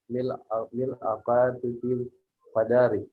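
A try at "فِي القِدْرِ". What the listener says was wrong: Qidri. Al-mil'aqatu fil qidri. Ada qadri, Lailatul Qadri. Kalau ini qidri ya, fil qidri. Ini qidri.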